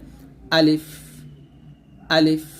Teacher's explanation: আমরা আলিফ উচ্চারণ করতে গেলে টান দেই তো টান দেওয়া যাবে না এখানে তাড়াতাড়ি পড়তে হবে